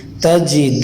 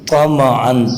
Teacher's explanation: تا کی آواز پتلی ہونی چاہیے اور طا کی آواز موٹی ہونی چاہیے